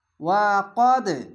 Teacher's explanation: ওয়া কদ, এই যে দেখেন কলকলা, কলকলাটি ধাক্কা মেরে নিচে সাউন্ড আসে